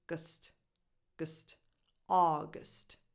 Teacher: the first syllable, aw, as in awesome, August, and the rest is unstressed.